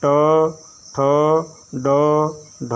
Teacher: मूर्धन्य है अगला ट वर्ग। इसमें जीभ मुड़ती है ऊपर की तरफ, अग्रभाग मुड़ता है। ट वर्ग में इसे मूर्धा कहते हैं, मूर्धन्य कहते हैं।